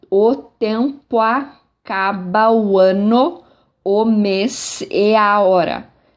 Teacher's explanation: o mês e a hora, a sílaba mais forte é O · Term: sílaba tônica